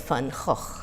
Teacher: both velar fricatives. Two velar fricatives to begin with.